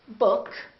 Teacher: if we say book, this K is voiceless. K, k, k. Therefore, the S that comes after that also remains voiceless, which is a S.